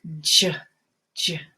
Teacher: start with the stop sound and then a continuing sound after that, like j. It's kind of like a D first.